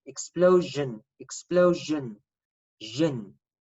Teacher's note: The final syllable is zhin, so ION, when it's preceded by an S, makes a zhin sound.